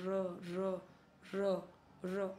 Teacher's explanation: लुंठित या प्रकंपित, र र र र ऐसे आ रहा है, प्रकंपित है थोड़ा